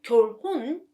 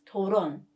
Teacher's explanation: Another example is 결혼, marriage. 리을 받침 and hiung are together, so you don't pronounce hiung sound